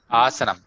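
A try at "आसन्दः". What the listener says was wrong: Asana or asandah. Asanda. Both the usages are there at some point. Seen both the usages. But let's take it as asanda. Because learn Sanskrit sometimes can give it wrong. So let's take it as asanda.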